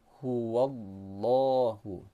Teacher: lafaz Allah ini dibaca secara tebal atau tafkhim karena huruf sebelumnya berharakat fathah.